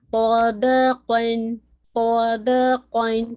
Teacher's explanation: قا heavy, با light and قاف heavy